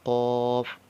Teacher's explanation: زبان کی جڑ کوے کے قریب سے جب نرم تالو سے لگے. یہ زبان کے آخر میں، گلے کے شروع میں جو کوہ ہے، اس کے قریب سے یہ حرف ادا ہوتا ہے قوف.